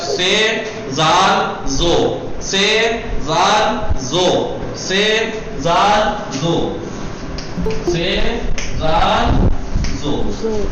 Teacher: تینوں کا مخرج کیا ہے؟ زبان کی نوک، اوپر کے دانتوں کا سرا، یہ مخرج ہے تینوں کا۔